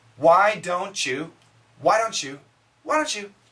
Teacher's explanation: with this T and the Y we get the CH sound